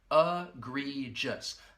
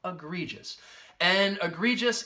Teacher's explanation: the first and third syllable will have that schwa sound that uh sound egregious that second syllable has the long e